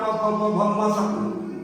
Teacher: तो इन प वर का उच्चारण प फ ब भ म व्यंजनों का उच्चारण ओठ या ओष्ठ से होता है